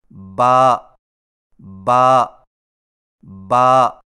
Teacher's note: با کی ادائیگی میں ہونٹوں کے گیلے حصے کو سختی سے ملا کر باریک آواز میں پڑھیں